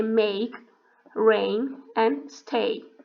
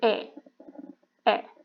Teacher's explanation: your tongue is at the front of mouth and your jaw is half open when you say eh